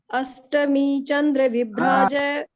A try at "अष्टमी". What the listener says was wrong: अष्टमी, अष्टमी श more than श, अष्टमी नहीं, स नहीं।